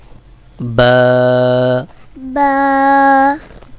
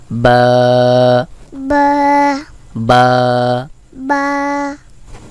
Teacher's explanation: দুই ঠোটের ভেজা অংশ থেকে বা উচ্চারণ হয়। বা উচ্চারণের ক্ষেত্রে এক আলিফ টান দিতে হবে।